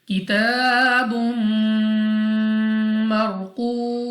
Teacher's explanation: मीम को साकिन करते हुए हमने इसको 3 से 4 सेकंड तक खींच कर पढ़ना है। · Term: मद आरिज